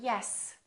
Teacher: the word yes I can say yes if I want to I can prolong that s for quite a long time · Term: continuent